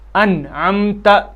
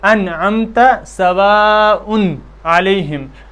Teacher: نون ساکن اور تنوین کو اپنے مخرج سے بغیر غنہ کے نکالنا۔ جب نون ساکن کہیں پر کلمے میں آ جائے یا تنوین آ جائے تو ان کو بغیر غنہ کے، ان کے اندر غنہ کیے بغیر ان کو اپنے مخرج سے ہی نکالنا۔ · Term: اظہار